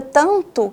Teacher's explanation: o tan é a sílaba tônica, então eu desprezo a sílaba átona, que é o to